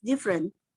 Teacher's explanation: leaving out the second syllables. Misalnya dalam percakapan biasa, kita sering mengucapkan kata berbeda sebagai different, dengan mengabaikan suku kata kedua.